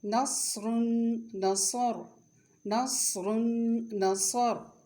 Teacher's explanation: صاد کی آواز موٹی اور سیٹی والی ہوتی ہے